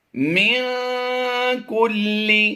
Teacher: نون ساکن کے بعد حرف قاف آ گیا حروف اخفا سے، تو یہاں پر ہم نے اخفا کرتے ہوئے پڑھنا ہے